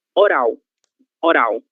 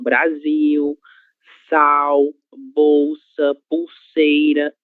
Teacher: Essa letra L deve ser pronunciada com som de U, porque ela está em posição final de sílaba